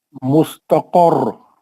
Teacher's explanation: را کو تکرار کرو، تجدید ہے